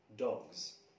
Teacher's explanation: As the pronunciation transcription, dog plus Z, it's voiced, dogs.